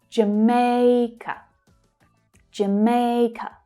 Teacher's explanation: second syllable is the stressed one and the others reduce.